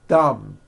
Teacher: My tongue came out, but there was never any air friction.